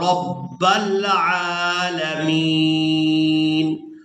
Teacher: را کو پورا ادا کریں گے اور با مشدد کے ساتھ ملائیں گے